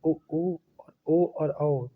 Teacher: जिन स्वरों के उच्चारण में होंठ गोलाकार या वृत्तमुखी होते हैं उन्हें वृत्तमुखी स्वर कहते हैं।